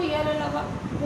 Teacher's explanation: इनके उच्चारण में जीवा दांत से पूरी तरह स्पर्श नहीं करती। जो जीभ होती है वो दांत से पूरी तरीके से टच नहीं करती है, इसलिए इनको अर्धस्वर भी कहते हैं।